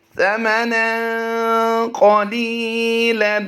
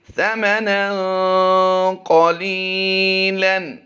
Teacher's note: جیسے ہی نن کی آواز آئے گی ہم غنے کی طرف چلے جائیں گے